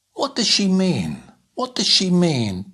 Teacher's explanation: first word stressed last word stressed the two in the middle not so strong